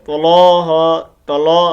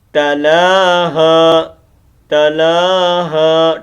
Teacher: اس لام کا خیال رکھنا، اس لام کو موٹا نہیں کرنا